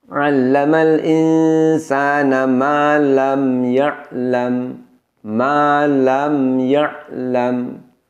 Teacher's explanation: Ada dengungnya, dan dengan mendengungkan itu suara kita tidak terputus, tidak ada bunyi jeda antara bunyi mim sukun dengan huruf setelahnya.